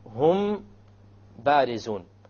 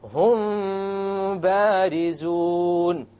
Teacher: You have a meme followed by a ba. You make the ikhfa and you have a ghunnah. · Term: ikhfaa shafawi